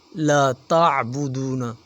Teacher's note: عین حروف حلقی ہے، اسے حلق سے نکالیں گے۔